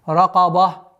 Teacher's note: Ра твердая, каф твердая, но ба у нас мягкая.